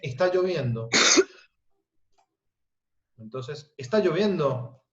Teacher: La cadena de entonación termina de forma ascendente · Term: curva ascendente del final